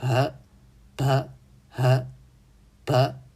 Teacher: 注意发音时有一个伴随的浊气流